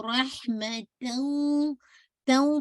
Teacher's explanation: پہلے فتح کو واضح کرتے پھر نزل ساؤنڈ ایڈ کیجیے گا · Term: ناقص ادغام